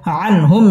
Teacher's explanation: আন ইজহার গুন্না ছাড়া স্পষ্ট করে পড়তে হবে আনহুম মিম সাকিন ইজহারে খাস গুন্না ছাড়া পড়তে হবে ওয়াও ঠোঁট